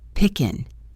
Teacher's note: The end of the word picking may not have a hard G sound. For many speakers, it's a softer sound made in the back of the throat, pickin'.